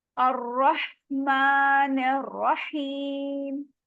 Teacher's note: र को मोटा पढ़ना है और रहीम में भी